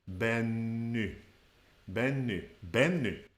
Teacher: the stress is at the beginning of the word